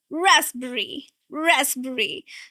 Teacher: The sound is z, not s and p.